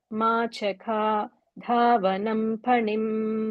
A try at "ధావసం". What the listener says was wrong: దాకి ఒత్తు పెట్టమాక.